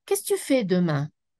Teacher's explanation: Mais je peux demander à quelqu'un, qu'est-ce que tu fais demain? Là, c'est une question. Et ce n'est pas une question qui monte.